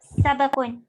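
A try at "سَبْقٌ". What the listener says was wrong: സബകുൻ, സബകുൻ അല്ല, സബകുൻ ബാഇന് സുകുൻ.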